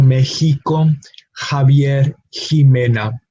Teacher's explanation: No, usually it shares that same sound, but it can also be pronounced like the Spanish J, which we covered already, which is a similar to the English H, and that is the case in words like Mexico. We have the letter X, but we have the sort of H pronunciation in the middle syllable.